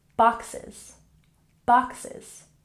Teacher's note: boxes has emphasis on the first syllable